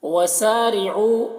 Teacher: اس مد کو مد منفصل کہتے ہیں، 3-4 الف کے برابر اسے کھینچ کر پڑھیں گے، ایک الف کے برابر بھی کھینچ کر پڑھ سکتے ہیں۔